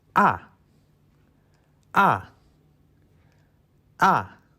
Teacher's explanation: The last tone is a car going down the hill. Start with so, ending with do.